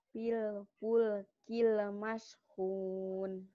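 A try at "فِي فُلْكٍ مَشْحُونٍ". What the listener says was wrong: Pil pul kil. Jangan ada e-e-nya. Pil pul kil mashun. Jangan ada e-e-nya, yuk.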